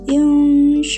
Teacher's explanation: hurufnya keluar dari tengah mulut dan suara dengung sedang tidak terlalu dekat dengan tidak terlalu jauh dari nun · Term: ikhfa awsat